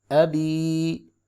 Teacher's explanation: یا سے پہلے زیر ہے، اس کو 1 الف کے برابر لمبا کریں گے، مدہ ہو رہا ہے۔